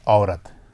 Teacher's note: ऐन की आवाज़ आ की आवाज़ ही होती है, लेकिन ज़रा भारी आवाज़ ज़रा देर तक बोली जाती है और हलक के आखिरी हिस्से की तरफ से बोली जाती है, माना हलक से निकाली जाती है ज़बान के आखिरी हिस्से की तरफ से।